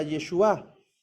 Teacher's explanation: la palabra hebrea para salvación es Yeshua o Yeshua, con el acento en la A